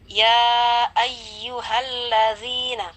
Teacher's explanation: Ada zal berharokat kasrah dan setelahnya ada ya sukun, maka hukumnya di sana mad tabi'i. Kita baca dengan kadar panjang 2 harkat atau 2 ketukan.